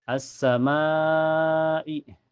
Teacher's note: Cara bacanya panjang bisa 4 sampai 5 harakat ya. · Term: mad wajib muttasil